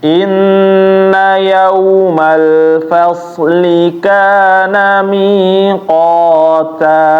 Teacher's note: Mi-nya panjang ya Bapak. Na-nya pendek.